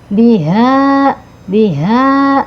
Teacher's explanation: H besar ya, ada di tenggorokan bagian bawah ya